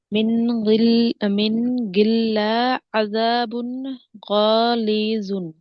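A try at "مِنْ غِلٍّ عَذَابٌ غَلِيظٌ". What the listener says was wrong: কেন আপু গিল্লিন। মিন গিল্লিন আযাবুন গালিযুন, টানগুলো আপু দিচ্ছেন না।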